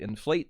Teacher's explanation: and weird words that are two syllables so inflate makes it the stress is on plate instead of in